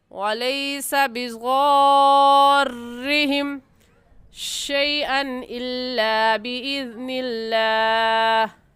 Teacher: حروف مدہ کے بعد تشدید آ جائے تو وہاں پر بھی مد ہوگی اور اس مد کا نام ہوگا مد لازم، اور اس کو 5 الف کے برابر کھینچیں گے